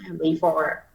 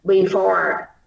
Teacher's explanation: cuối chữ before là mình sẽ có âm r để trong ngoặc. Để mục đích là mình phải luyến âm, phải có phần gì curl tongue, phải cong lưỡi. Cô đọc before rất là nhẹ luôn.